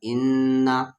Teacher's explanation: نون پہ تشدید آ گیا یعنی غنہ ہوگا